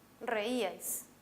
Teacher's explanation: en reíais la mayor fuerza de voz está en la i. Y esta es una vocal cerrada.